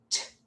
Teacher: We make the T sound with only a burst of air and do not use our vocal cords. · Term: voiceless stop sound